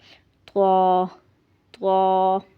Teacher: اس کو تھوڑا موٹا کر کے اور طا منہ بھر کر پڑھنا ہے